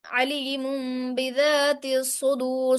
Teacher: स्वाद मुशद्दद होगा और स्वाद मोटा करेंगे, और रॉबी मोटी होगी।